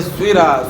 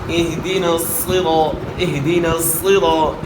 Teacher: تو صاد کو موٹا کریں گے, اور موٹا کرنے کے لیے صاد میں ہونٹ استعمال نہیں کرنے, ہونٹوں سے صاد کو ادا نہیں کرنا. صاد کو موٹا کرنے کے لیے زبان کو تالو کی طرف اٹھانا ہے. عام طور پہ موٹے حروف میں ویسے بھی لوگ جو ہے غلطی کرتے ہیں, ہونٹ گول کرتے ہیں, لیکن صاد میں خاص کر وہ ہونٹ استعمال کرتے ہیں.